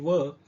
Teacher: यांना काय म्हणतात औष्ठ वर्ण त्याच्यानंतर दंतोष्ट वर्ण एकमेव आहे व दात आणि ओठ यांना जिभेचा एकाच वेळी स्पर्श होतो